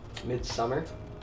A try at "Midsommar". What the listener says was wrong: Midsommar, like it's an O.